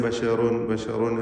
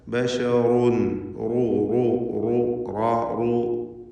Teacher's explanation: ബശറുൻ റാഹിനെ തടിപ്പിക്കണം, തഫ്ഖീം ചെയ്യണം. റാഹിൻ്റെ തൻവീനിനെ ശേഷമുള്ള മീമിൽ പൂർണ്ണമായും ലയിപ്പിച്ച് ഷദ്ദുള്ള മീമിനെ മണിച്ചുകൊണ്ട് ഉച്ചരിക്കുക.